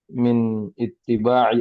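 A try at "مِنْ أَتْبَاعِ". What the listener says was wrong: salah cetak itu ya. Salah harokat. Min atba harusnya.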